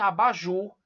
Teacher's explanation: Ju é pronunciado com mais ênfase. As outras sílabas são com menos ênfase, portanto, sílabas átonas. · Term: sílaba tônica